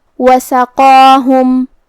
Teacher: ہم قاف کو اور مد الف کو دونوں کو تفخیم سے مطلب بھاری آواز میں ادا کریں گے